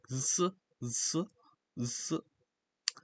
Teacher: So it's not really an S sound, it's in between. The best way to describe it, I think, would be in between an S and a Z sound.